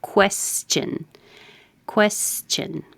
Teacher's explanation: It's important to round your lips as soon as you make your K. Well, even before.